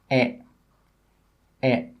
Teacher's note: the sound doesn't come from the top of the mouth. It comes from the front of the mouth at about the middle. My tongue is in the middle of my mouth, and it's not high and it's not low.